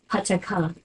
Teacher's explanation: Pataka is an example of all these sounds are plosives. The vowel is the same, but the plosives vary by place.